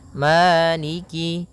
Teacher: Maliki di lafal Ma ada hukum tajwid berupa mad thii yaitu adanya fathah bertemu dengan alif panjangnya dua harakat Maliki kemudian Kaf di sini ada huruf kasrahnya maka sempurnakan kafnya